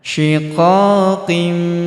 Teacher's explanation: huruf qo kita panjangkan kan dua harakat karena terdapat alif di depannya